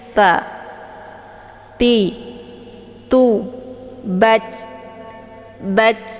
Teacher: pengucapan huruf ta, dia memiliki sifat hamas. Jadi ada desis anginnya.